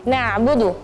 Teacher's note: bukan hamzah tapi perhatikan di situ ada huruf ain